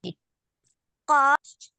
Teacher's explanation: قاف جب آپ پڑھیں گی تو پیچھے کی جو ہم نے بتایا نا زبان کی جڑ اس سے سافٹ پیلٹ سے لگ جاتی ہے. تو قاف محسوس ہو رہا ہے نا کہ وہ ہماری لگ رہی ہے.